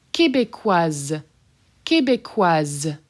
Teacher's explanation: That S is done as a Z.